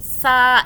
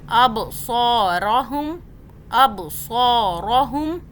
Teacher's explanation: قلقلہ means یہاں پہ جھٹکا دینا ہے. اب صاد کو سو پڑھنا ہے، سین سا ایسے نہیں پڑھنا